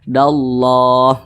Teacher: huruf lam ini bertasydid sehingga huruf dalnya tidak dibaca panjang. Walaupun di sini ada alif dan dia berbaris ke atas, maka dibaca pendek dallah.